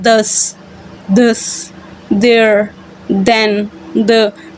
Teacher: फिर आपके पास वर्ड है दस, देयर, देन, द, तो ये हमारे पास वॉइस्ड साउंड है, यानी आप जब इनको प्रोड्यूस करते हो द, देखें इनिशियल साउंड 10 में जो इनिशियल साउंड है दस, ठीक है ना, तो आपके जो वोकल फोल्ड्स हैं वहाँ पे वाइब्रेशन फील होती है